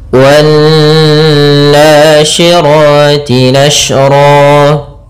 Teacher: Alif dan lamnya ditulis tapi tidak dibaca sehingga kita langsung membaca pada huruf nun yang bertasydid. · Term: alif lam syamsiyah